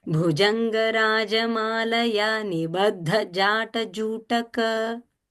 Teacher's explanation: Again, ja is simple and bha and dha are Mahaprana.